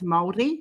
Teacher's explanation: It's Māori. You roll the R.